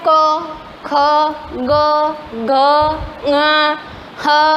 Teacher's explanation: ये सारे कंठ्य यानी यहाँ से बोले जाते हैं, कंठ में से बोले जाते हैं।